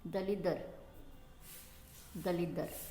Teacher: लेकिन पहले का जो व्यंजन है र जो है वो किस में बदल गया है? र ल में बदल गया है। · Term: पश्चगामी विषमीकरण